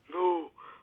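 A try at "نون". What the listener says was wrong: Noon, noon, not no, noon. Okay, so noon, not nu, yeah?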